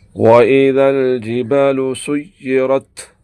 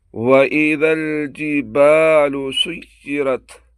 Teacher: غور کریں، الف مدہ کی آواز کو مکمل نکالے بغیر الجبالو کہنا درست نہیں۔ الجبالو میں الف کی پوری کھینچاؤ کے ساتھ ادائیگی ضروری ہے